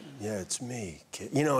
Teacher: I I tried to once but it sounded so inappropriate because it's actually kind of a very breathy low register bedroom voice